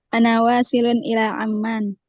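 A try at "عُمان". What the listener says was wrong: Ini salah, bukan amman ini. Umman. Umman. Salah harakatnya.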